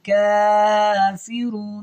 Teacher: کاف کے اوپر کھڑی زبر ہے جس کی وجہ سے ہم نے اس کو لمبا کیا ہے، اور یہاں پہ رون جب وقف کرنا ہے تو تھوڑا سا اس کو نا رون کو لمبا کر کے ادا کرنا ہے، کیونکہ یہاں پہ آیت ختم ہو رہی ہے۔